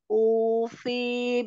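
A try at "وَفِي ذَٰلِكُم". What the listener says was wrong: Nah dari ufinya kepanjangan pendek aja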